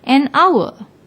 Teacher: although hour starts with H but when we pronounce the word the H is silent we pronounce it as if it begins with the second letter